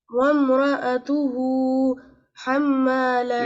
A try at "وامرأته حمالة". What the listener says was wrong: No, you took break. Wamra'atu.